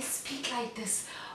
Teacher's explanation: voice because in this voice the one that i just demonstrated a lot of breath is moving out without actually touching the vocal cords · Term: breathy voice